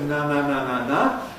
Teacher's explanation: the soft palate is lowered. There is a gap between the soft palate and the rear wall of the pharynx, so that the air can stream into the nose